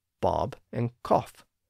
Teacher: Again, those words don't rhyme today, but we have to turn back the clock and give crab and laugh the older short A sounds, crab and laugh. And we have to give bob and cough their rounded short O sounds